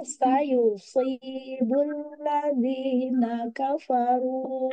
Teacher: Sayusi, nah sodnya ditebalkan.